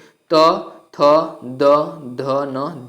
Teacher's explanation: Description friends यह है कि दंत व्यंजन जिन वर्णों का उच्चारण ऊपर के दांतों पर जीभ के लगने से होता है उसे दंत व्यंजन कहते हैं। जैसे त, थ, द, ध, न दंत व्यंजन है।